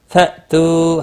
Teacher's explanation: حمزہ ساکن کو تھوڑا جھٹکے کے ساتھ پڑھیں گے۔ تو واو مدہ ہے، ایک الف کے برابر کھینچ کر پڑھیں گے۔